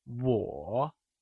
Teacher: Wǒ is pronounced using the falling rising tone